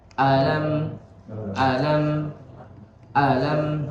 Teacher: Maka di situ hamzahnya dia dinambarkan, dia ditekan supaya tidak disangka alam ini termasuk satu kata. Jadi dibacanya lebih ditekan di hamzahnya. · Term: hamzah istifham